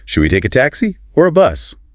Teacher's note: Rising tone on taxi, falling on bus.